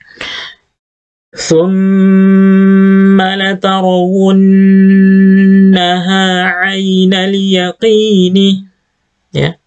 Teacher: mim dan Nun yang bertasydid dibaca mendengung